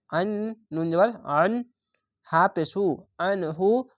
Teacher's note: আইনটিকে গলা চিপে মোটা করে পড়বেন